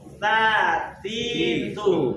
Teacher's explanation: ujung lidah bertemu dengan gigi seri atas ujung gigi seri